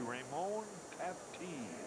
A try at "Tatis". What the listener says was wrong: Just put the S on it and you got it.